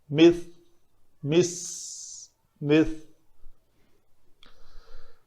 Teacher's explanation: اس ذال کی طرح زبان نوک لسان دونوں دانتوں کے درمیان آئے گی تاکہ اس کی سین سے مشابہت جو ہے وہ ختم ہو جائے